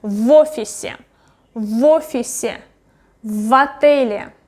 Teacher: If the next letter is vowel, I will pronounce it really like almost all together.